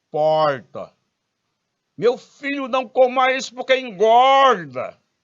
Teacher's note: O pessoal, principalmente o pessoal do interior de São Paulo, usando aquele R retroflexo